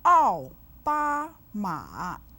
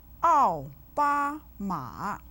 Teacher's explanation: 奥 with the 4th tone, 巴 with the 1st tone, and 马 with the 3rd tone